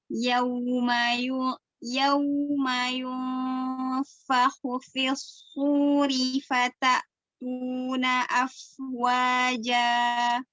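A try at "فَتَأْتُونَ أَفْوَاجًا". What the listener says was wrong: Ya, fata tu, keluarin dia. Jangan ditahan suaranya. Fata tuna. Ya, tu, huruf tipis ya. Keluarin aja suaranya. Tu, jangan di dalam.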